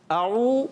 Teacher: اعو واو مدہ, عین کی آواز کلیئر ہونی چاہیے. عین کہاں سے ادا ہوتا ہے؟ حلق کے درمیان والے حصے سے